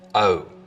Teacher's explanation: the vowel sound in boat, most, hope, starts with the tongue further forwards in the mouth, O. Interestingly, goat fronting, which is now widespread in a lot of the American South, seems to have originated in North Carolina sometime in the last part of the 19th century.